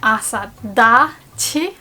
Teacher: When we grab two nouns and make one noun, the sound of the first consonant letter changes. So ta becomes da. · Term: compound noun